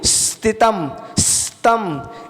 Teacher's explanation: उसके बाद में स्थितम, इसमें जो सा लगा है ना, सा है वो आधा सा है, तो आधे सा का उच्चारण सीटी की तरह होता है, जैसे सीटी निकल रही हो।